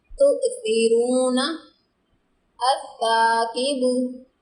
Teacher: سا کی ساؤنڈ میں سیٹی کا ٹچ نہیں آیا، اس کو ہم نے اسمہما نہیں پڑھا۔